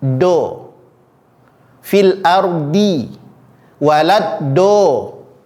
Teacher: yang paling sering terjadi adalah D ini berubah menjadi huruf Dal yang dibulatkan